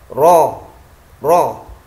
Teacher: Ujung lidah agak ke dalam sedikit adalah tempat keluarnya huruf ro. Ya, jadi lam, nun, ro ini tempatnya sama, cuma ya agak pergeseran sedikit-sedikit saja.